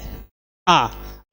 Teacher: बोलने में आपका मुंह जो है पूरा खुलता है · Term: विवृत